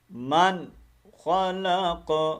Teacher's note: من کے اوپر غنہ نہیں کرنا, اظہار کرنا ہے, کیونکہ آپ کو پتا ہے حروف ہلکی آ گئی ہے.